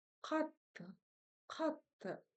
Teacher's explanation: Здесь ударение будет на первый слог.